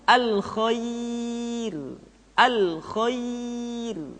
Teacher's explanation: ra dibaca dengan tipis ketika didahului oleh huruf ya yang sukun